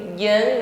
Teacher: Nun tasdid dengungkan setelah berdengung panjangkan satu Alif Jan Dal sukun sifatnya Qalqalah ya pantulkan jangan tertahan bukan ad